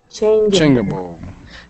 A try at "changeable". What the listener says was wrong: Not ga. It's change. Ja.